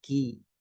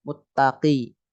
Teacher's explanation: ada hamsnya dikit ka agak depan ya kalau Q belakang